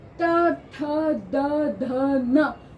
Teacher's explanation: पांचों ही वर्ण दांतों के पीछे वाले भाग को छूकर स्पर्श करके बाहर आते हैं इसलिए इन्हें हम दंत उच्चारण स्थान मानते हैं इनका इसी तरह